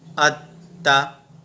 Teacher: आप देखिएगा कि ता पर तशदीद है तो ये 2 बार पढ़ा जाएगा। हमज़ा ता ज़बर अत, ता ज़बर ता, अत्ता।